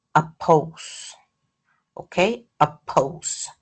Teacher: the second syllable is pose and that p is aspirated